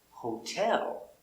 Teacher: And we see the T between two vowels is a T. It's not a D because the stress is on the second syllable. · Hotel, repeat. Now with hotel, we put the stress on the second syllable